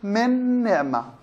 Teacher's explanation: النون مع النون تضغم بسبب التماثل